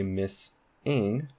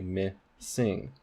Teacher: So we wouldn't say miss-ing, we would say missing. So you can hear this S in the onset of the second syllable.